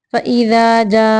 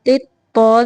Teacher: تا کو باریک تو کو موٹا پڑھنا ہے ، فإذا جاءت الطا زبر الف مد میم تو، فإذا جاءت